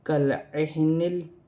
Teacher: لام کو کاف کے ساتھ ملا کر پڑھا جائے گا اور عین اور ہا اپنے اپنے مخرج سے ادا کیے جائیں گے